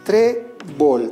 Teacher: Trébol. Tenemos dos sílabas. ¿Dónde se encuentra la mayor fuerza de voz? En la penúltima sílaba. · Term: palabra grave o llana